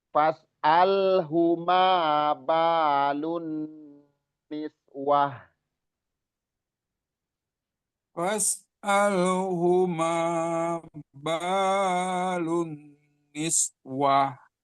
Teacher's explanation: Hu-nya nggak panjang, binunnya gunnah musaddadah perlu ditahan.